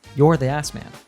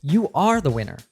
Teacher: In English, when we stress words like are, we're usually expressing disbelief, surprise, or confirmation.